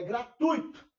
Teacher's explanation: Não ponha força nesse i. A pronúncia dele não é essa. É gratuito. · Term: ditongo decrescente